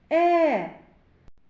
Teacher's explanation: коли ми вимовляємо звук е губки розтягнуті в усмішці повітря вільно виходить із ротика Та не зустрічає ніяких перешкод